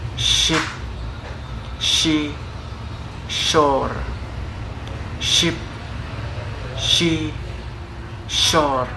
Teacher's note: The voicing is voiceless, and for the place is postalveolar, and the manner is fricative.